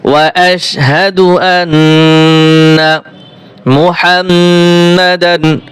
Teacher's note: নুনের উপরে তাসদীদ রয়েছে, ওয়াজিব গুণ হবে।